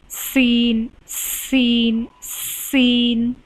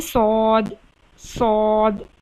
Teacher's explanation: सीन को बारीक पढ़ना है और सौद को पुर पढ़ना है। तो सौद मोटा हरूफ में आ जाता है, तो इसलिए सौद सौद, सीन सीन सीन, इस तरह से पढ़ेंगे आप।